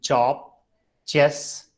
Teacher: cha sound, when ta and shaw is merged together